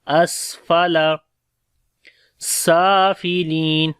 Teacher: سین کے اوپر صفت ہمس رہے گی، سانس جاری ہوگا، صفت صفیر بھی ہے، سٹی کی آواز آئے گی